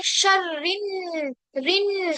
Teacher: तो यहाँ पर हमें क्या करना है, शर्रिन, रिन आवाज नाक के अंदर ले जानी है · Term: गुन्ना